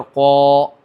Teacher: الف سے پور مراد یعنی کہ قاف الف زبر قو، یہ والا جو الف ادا ہوتا ہے قو، پور، اس کے پہلے حروف مستعلیہ آ گیا الف سے پہلے، تو حروف مستعلیہ کی وجہ سے الف کیا ہو گیا؟ پور ہو گیا